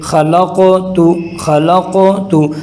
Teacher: اگر قلقلہ نہیں کریں گے تو غلط ہو جائے گا، تو یوں ہوگا خلقت، قاف کے بجائے کاف